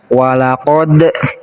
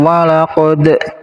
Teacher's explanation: cara baca qolqolah itu harus dipantulkan